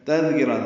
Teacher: تذکرہ دال نرمی سے پڑھا جائے گا، کاف را باریک ہے.